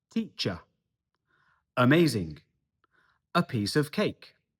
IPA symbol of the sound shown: ə